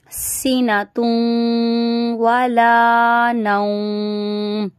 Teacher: دو پیش کی تنوین آ رہی ہے، واو آ رہا ہے، ادغام کا گنہ ہو رہا ہے، یہاں پہ ہونٹوں کو گول کر دیں گے